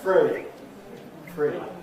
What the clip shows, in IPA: frə̯i